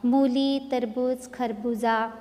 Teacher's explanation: इस मूली शब्द में भी मू अक्षर पर हम जोर देकर बोल रहे हैं। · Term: बड़े उ की मात्रा